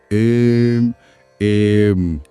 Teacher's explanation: इसे आयम नहीं बोलना है, नहीं एम। ये एम एम जैसा थोड़ा खींचा हुआ और नाक से गूंजता हुआ होना चाहिए। एम एम। हाँ, और इसे साफ और एकाग्र होकर बोलना है।